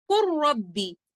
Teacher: ये इदगाम इदगाम कामिल होता है, लेटर लाम मुकम्मल तौर पर मर्ज हो जाता है लेटर रॉ के अंदर और हम इस इदगाम को कहते हैं इदगाम मुतकारिबान सगीर।